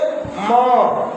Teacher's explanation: तो होठ की भी सहायता होती है और नाकों की भी नासिका की भी सहायता होती है।